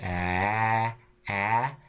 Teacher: the sound there is a tense version of a in bad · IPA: [a]